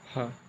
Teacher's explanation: जैसे आप ह बोलेंगे तो वायु जो है ना, आपके ज़्यादा जोर लगेगा और तुरंत झटके से निकलेगी बाहर